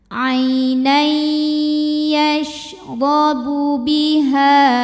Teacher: huruf ro dibunyikan secara tafkhim karena harakatnya fathah cara bacanya adalah ditebalkan pangkal lidah ngangkat